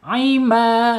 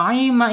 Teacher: ketika memanjang ya ketika mad panjang ini tidak boleh masuk hidung